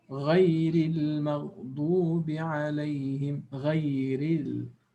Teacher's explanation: the ra is not strong. It becomes empty mouth. We say muraqqaqa with tarqiq.